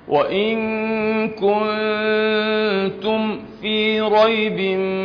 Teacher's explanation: الميم مع الفاء حكمها الإظهار الشديد